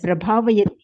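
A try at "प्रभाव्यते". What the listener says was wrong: Prabhavyate. Bhavayati will become bhavyate. Pra suffix is there.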